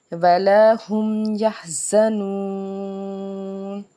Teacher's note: یحزنون 3 سے 5 الف کے برابر یہاں پہ کھینچ کے ادا کریں گے